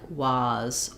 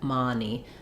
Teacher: people will say more of an ah sound than an uh sound